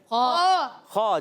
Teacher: خا کہاں سے ادا ہوتا ہے؟ حلق کے اوپر والے حصے سے۔ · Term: خا کا مخرج